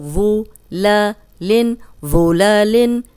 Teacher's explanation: اب یہ ذو ہے اور سیٹی کی آواز نہیں آئے گی، موٹا پڑھیں گے۔